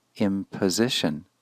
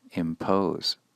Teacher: a related noun imposition also shows the shortening of that second vowel from the original verb impose